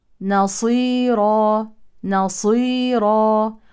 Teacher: وقفا تنوين النصب نقف عليه بالف يعني مد عوض عوضا عن نون التنوين الساكنه